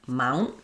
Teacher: So that sounds like mount. I'm doing the ow, and then my N is very short. I'm stopping for the T, but I'm not releasing it. Mount, mount, and then I'm just doing another sound, which is a syllabic N.